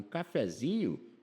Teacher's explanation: se você for tomar um cafezinho, não põe acento, porque a sílaba tônica é o zi